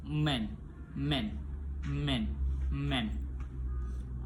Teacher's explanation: place of articulation bilabial. Manner of articulation nasal. Udara keluar melalui hidung. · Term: voice bilabial nasal